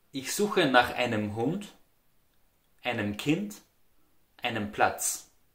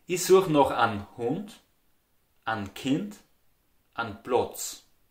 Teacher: the word einem, einen is pronounced very differently in Austria with simply an